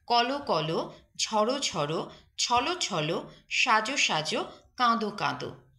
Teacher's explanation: শব্দ বিশেষণ রূপে ব্যবহৃত হলে অন্তিমের অ এর মত উচ্চারিত হবে অন্তিম মানে শেষের অটা ও এর মত উচ্চারিত হবে